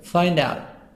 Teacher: Find out, make a link between D and O.